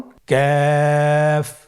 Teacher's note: কাফ উচ্চারণের ক্ষেত্রে অবশ্যই পাতলা করে উচ্চারণ করতে হবে এবং 3 আলিফ টেনে পড়তে হবে। · কাফের মাখরাজ আমরা স্ক্রিনে দেখতে পাচ্ছি। কাফের মাখরাজ হলো জিহ্বার গোড়া থেকে একটু আগে বাড়িয়ে তার বরাবর উপরে তালের সঙ্গে লাগিয়ে উচ্চারিত হয়